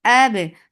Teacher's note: Ba will get sifa qalqala. This qalqala should be very clearly done. Should not lower your voice.